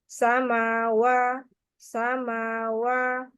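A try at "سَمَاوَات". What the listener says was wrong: He jangan terlalu panjang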